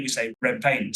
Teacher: So, for example, is the assimilation of, if we look at the phrase red paint, we often, if we say it together, red paint, we say red paint. So the D becomes a B because it's assimilating into the next word.